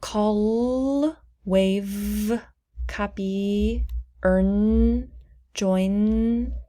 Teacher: if you say those sounds touching your throat you will notice that your vocal cords are moving they're vibrating that means they are voiced consonants or they are vowels